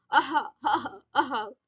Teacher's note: ये महाप्राण है, साउंड ज्यादा, आवाज हमें खींचनी पड़ रही है। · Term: विसर्ग